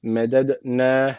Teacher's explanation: d harfi cezim aldığı için burada kalkale tecveti var. Hafif bir vurgulamamız gerekiyor.